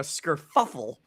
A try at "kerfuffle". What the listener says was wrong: There's no S. Kerfuffle.